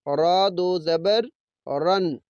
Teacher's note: را 2 زبر رن، را کی آواز کے موٹا پڑھیں گے جب را کے اوپر 1 زبر یا 2 زبر یا 1 پیش یا 2 پیش آتے ہیں تو را کی آواز کو موٹا پڑھتے ہیں